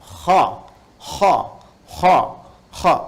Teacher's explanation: itu bagian pangkal lidah di paling ujung itu menyentuh ke langit-langit. Sehingga ketika dia ke atas, suaranya lebih tebal.